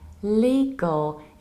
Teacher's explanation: The thing is that first you have long E, li, and then very, very important thing, we need to reduce the ending